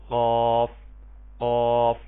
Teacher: قاف حرف مستعلیہ ہے، اس کو پر کر کے پڑھیں گے. یہ زبان کی جڑ کوے سے متصل جب اوپر کے تالو سے لگے گی تب یہ حرف ادا ہوگا.